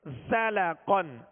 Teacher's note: زا کو سختی کے ساتھ ادا کریں گے مگر باریک پڑھیں گے. زا کو سیدھی کی آواز میں سختی کے ساتھ ادا کریں گے.